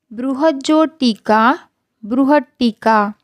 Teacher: त के बाद यदि ट या ड हो तो त ट या ड में बदल जाता है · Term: त संबंधी